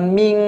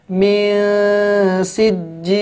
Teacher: Bukan ming tapi min sijil, ya dileburkan ya, disamarkan ke huruf sin ya. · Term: ikhfa